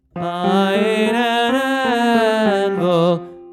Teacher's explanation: you won't typically put the glottal attacks on the vowels in the middle of the phrase